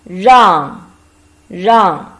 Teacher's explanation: This is a combination of R and ang, fourth tone.